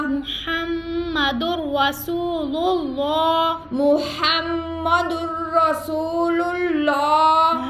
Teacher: آگے دال کے اوپر دو پیش تنوین کے بعد را آ گیا, تو را میں ہم کیا کریں گے, را بغیر غنہ کے ادا ہوگا, لیکن را کو ہم پڑھیں گے محمدر. آگے را کے اوپر زبر را کو پر پڑھیں گے